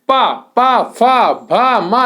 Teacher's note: पा, पा, फा, भा, मा, ये आपके ओंठ मिलते हैं। पा बोलेंगे तो आपके होंठ मिलेंगे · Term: ओष्ठ ध्वनि